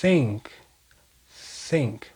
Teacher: Eu simplesmente estou assoprando. Eu coloco a língua entre os dentes e deixo o ar passar. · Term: som desvozeado